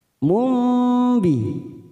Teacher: Kita dengungkan selama 3 ketuk seperti bertemu dengan huruf mim. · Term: iklab